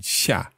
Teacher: fourth tone. So that's the one that's coming down